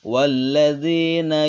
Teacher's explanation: alif lam syamsiah dibaca idgham atau memasukkan